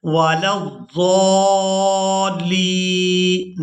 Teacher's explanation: لام کو یا ساکن کے ساتھ ملائیں گے تو کھینچ کر ادا کریں گے کیونکہ یہ یائی مدہ ہے